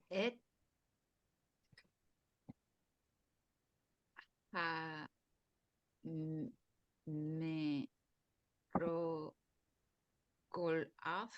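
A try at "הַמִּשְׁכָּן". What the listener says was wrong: This is a kaf. Ha-mish-kan. Et hamishkan.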